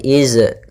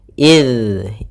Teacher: Pada bacaan id, usahakan jangan sampai memantul huruf zalnya, jangan dibaca dengan iz, karena di sini huruf zal yang mana makhrajnya yaitu ujung lidah menempel dengan gigi seri atas